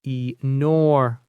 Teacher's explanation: The stress is on the second syllable. Enormous. Since nor is the strong part, the ending is just a soft mus.